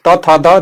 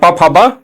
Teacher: ट वर्ग मूर्धन्य से, त वर्ग त थ द दंत से और प फ ब ओठ से बोला जाता है